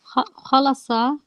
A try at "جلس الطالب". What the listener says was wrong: jim, صح? The first letter is a jim.